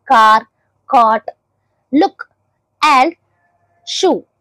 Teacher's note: soft ప్యాలెట్ కి touch అవుతూ ఉంటుంది బ్యాక్ ఆఫ్ ద టంగ్ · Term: బ్యాక్ వోవెల్స్